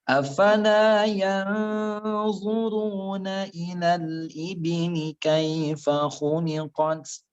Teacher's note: Mad tabi'i. Nun sukun bertemu dengan dhat, hukumnya ikhfa. 3 harokat ya, disamar-samarkan persiapan masuk ke huruf setelahnya. Jadi kalau anfal yanzuru, persiapan ke selanjutnya.